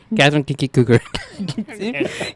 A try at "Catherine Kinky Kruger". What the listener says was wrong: You said Cougar instead of Kruger. Catherine Kinky Kruger. Catherine Kinky Kruger. Catherine Kinky Kruger. Catherine Kinky Kruger. You do have to kind of say it in a beat.